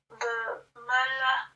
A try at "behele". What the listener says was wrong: Non, c'est ha. Behele.